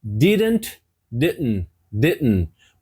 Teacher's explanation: mais uma vez o t não foi pronunciado